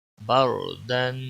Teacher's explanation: با را زبر بر، دال الف دو زبر دن، بردن، را ساکن، را پور بھی پڑھا جائے گا کیونکہ حروف مستعلیہ میں سے تو یہ نہیں ہے لیکن عارضی پور ہوتا ہے، لام اور را۔ را یہاں پر پور پڑھا جائے گا کیونکہ را ساکن سے پہلے زبر ہے، را ساکن سے پہلے جب بھی زبر یا پیش ہو تو را ساکن پور پڑھی جاتی ہے۔